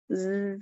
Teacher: buzzing sound مکھی کی طرح، زا کی آواز مکھی کی طرح ہوتی ہے ، ز کر کے، یہ دیکھیں تھوڑا اس پہ بھاری پن